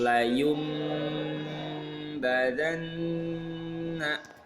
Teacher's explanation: Nih nun sukun ketemu ba, jedanya 3. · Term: iqlab